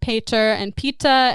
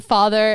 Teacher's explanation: the change from voiceless stops like P in the word father in Latin and Sanskrit, as in pater and pita, into a voiceless fricative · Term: Grimm's Law